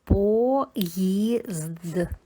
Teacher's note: Після голосної ї у нас також звучить як йотоване, тобто позначає два звуки й. Перший звук п твердий, приголосний, потім о голосна йотована ї позначаємо двома рисочками і кружечком.